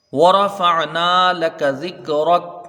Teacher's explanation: را کے اوپر زبر ہے اس لیے را کو پر پڑھیں گے۔